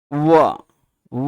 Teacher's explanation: इस व का उच्चारण स्थान क्या है? तो दंत प्लस ओष्ठ दोनों हैं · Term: दंतोष्ठ